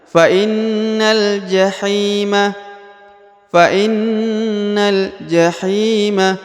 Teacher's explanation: faainna Inna ditekan ya Fain ini huruf i ya fainna kemudian huruf Na langsung masuk ke huruf lam ya Langsung Melompat ke huruf lam tanpa membaca huruf alif ini